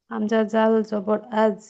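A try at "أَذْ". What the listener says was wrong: না আপু, জাল উচ্চারণটা হচ্ছে না। জাল উচ্চারণটা ঠিক করবেন। জাল হচ্ছে আপনার নরম হরফ। নরম হরফ উচ্চারণ করার ক্ষেত্রে আমি বারবার বলতেছি, আপনার সিফাতগুলি মনে রাখবেন। নরম হরফ উচ্চারণ করতে হলে, নরম করতে হলে হরফকে জিহ্বাটা একটু আগে বাড়িয়ে দিবেন।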